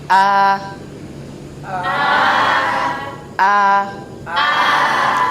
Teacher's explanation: Nah, kita dapat merasakan huruf hamzah keluarnya dari tenggorokan bawah.